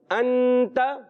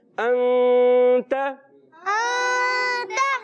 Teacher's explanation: نون کو چھپا کر ادا کرتے ہیں · ایک الف کا غنہ ناک میں آواز لے کے جاتے ہیں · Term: اخفا